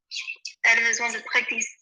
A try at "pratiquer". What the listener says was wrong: Pratiquer, pratiquer, pratiquer, pratiquer, pratiquer. No, listen to Lukey. Listen. Pratiquer, not pract. There's no C in it. Pratiquer.